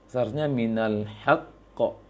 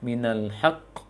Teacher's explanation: Karena qaf tidak ada angin. Sedangkan kho ada angin. Nafas yang dialirkan. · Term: huruf qaf